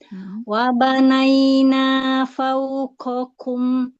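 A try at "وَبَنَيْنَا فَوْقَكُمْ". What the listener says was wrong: Qafnya jaharkan lagi.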